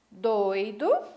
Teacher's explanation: percebam que na palavra doido eu tive duas vogais juntas na mesma sílaba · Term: ditongo